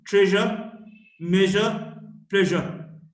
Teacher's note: J, voiced, post-alveolar fricative